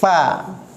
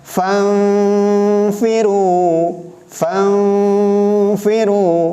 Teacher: gigi seri atas diletakkan di bibir bawah. Gigi seri atas di bibir bawah.